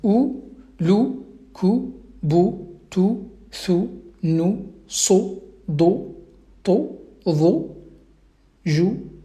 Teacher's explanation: Donc, bien évidemment, avec la damma, bah, j'obtiens, donc la damma, on sait très bien que c'est une voyelle courte, une voyelle brève, du coup ça produit le son ou, mais rapide, donc court · la damma, comme j'ai dit, produit un son ou qui est court